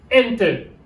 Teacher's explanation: L'accent, c'est sur le E. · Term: stress